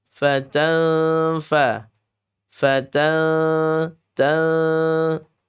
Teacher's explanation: Ikhfa pertengahan. Nunnya sudah masuk ke huruf fa melebur ya.